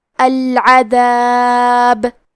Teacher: قبلہ، کلمت العذاب میں آخر میں حرف البا پہ رکیں گے تو اس پہ جزم سے رکیں گے، تو یہاں با کا حکم ہوگا قلقلہ، لہذا ہم حرف البا کو ہلاتے ہوئے یہ کلمہ پہ رکیں گے۔